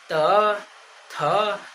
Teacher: तो जीभ जो है दांत में आन के टच होता होगा।